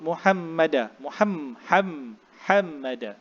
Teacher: Ha tu mesti kita sebut di kerongkong kita. Kerongkong yang berada di berdekatan dengan anak tekak. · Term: makhraj huruf ha